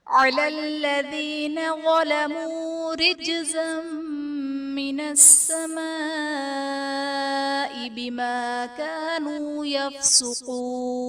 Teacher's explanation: جیم حرف قلقلہ ساکن ہے تو یہاں پر قلقلہ خوب ظاہر کریں گے. زا پر دو زبر کی تنوین، تنوین کے بعد حروف جرملون میں سے میم ہے تو یہاں پر ادغام مع الغنہ کا قاعدہ ہوگا، یعنی تنوین میں ہم غنہ کر کے پڑھیں گے.